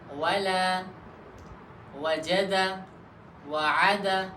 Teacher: اب حرف واو کا مخرج، تو واو دونوں ہونٹوں کی گول ہونے سے ادا ہوتا ہے۔